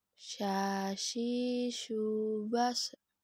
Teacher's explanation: Huruf sya keluar menyentuh tengah lidah dengan langit-langit. Diucapkan mengalirnya udara dan nafas, bahkan ketika kita melafalkan, menyebar nafas dan udaranya yang disebut dengan tafashi.